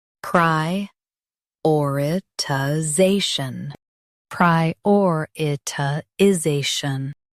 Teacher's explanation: Emphasize or and soften za.